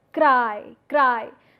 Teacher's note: The two vowels are coming in continuation and the shift takes place from one vowel to the other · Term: diphthong